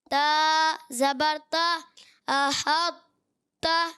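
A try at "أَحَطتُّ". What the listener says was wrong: یہ تا پر زبر ہے یا پیش ہے یہ بتائیے؟ تو آپ نے تا پر زبر پڑھ رہے ہیں آپ؟ احط تو. پہلے موٹا کرنا ہے. احط, دیکھیں منہ بھر گیا. احط تو.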